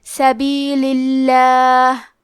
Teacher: کلمت سبیل کے آخری میں لام کے نیچے زیر ہے، تو لفظ الجلالہ مطلب کلمت اللہ کے لام کا حکم ہے ترقیق، مطلب ہم حرف اللام کو پتلی آواز میں پڑھیں گے۔